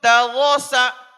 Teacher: اس میں را پر اور سین میں صفائی کے ساتھ ادا کروائیں گے